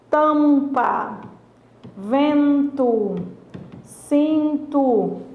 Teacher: Nesse caso, o M e o N, eles não são pronunciados, tá? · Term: dígrafo vocálico